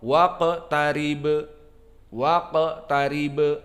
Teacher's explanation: Waqtarib, wal ba disukunkan karena waqaf, waqtarib, waqtarib, maka ba ada qalqalah dikarenakan disukunkan